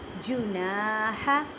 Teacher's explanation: ہا کو ادا کرتے ہوئے خیال رکھیں کہ ہا کو حلق کے درمیان والے حصے سے ادا کریں